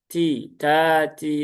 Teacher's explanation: Tak juga sama ya, tak sifatnya sama seperti kaf, juga ada hamsnya, ada syiddahnya juga, maka pastikan hamsnya keluar.